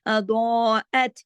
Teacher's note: ضاد موٹا پڑھا جائے گا، کھینچ کے پڑھا جائے گا، اوپر مد ہے.